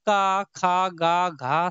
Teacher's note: यह आपके आते हैं कंठ में